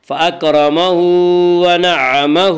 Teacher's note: فاکرمہ، ہا کے اوپر الٹا پیش ہے، ونعمہ کی ہا کے اوپر بھی الٹا پیش ہے، الٹا پیش قائم مقام ہے واو مدہ کی، اس لیے الٹا پیش کو 1 الف کے برابر کھینچ کر پڑھیں گے۔